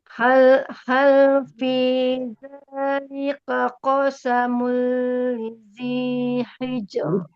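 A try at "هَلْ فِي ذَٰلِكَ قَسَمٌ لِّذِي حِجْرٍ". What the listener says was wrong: Ya, tapi tipis hijr. R biasa. Hijr. Hijr. Hijr. Hijr. Hijr.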